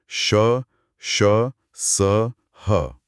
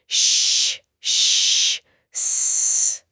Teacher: इनके उच्चारण में हवा मुंह में एक संकरे रास्ते से निकलती है, जिससे घर्षण होता है और एक गर्मी सी पैदा होती है। आप श या स को खींचकर बोलिए, श, श, स। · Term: ऊष्म या संघर्षी व्यंजन